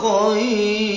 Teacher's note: Khair ketika diwakafkan roknya jadi tarkik, walaupun rok itu berharokat domatain atau tanwin domah, tetap dibaca tarkik karena ketika diwakafkan roknya jadi sukun.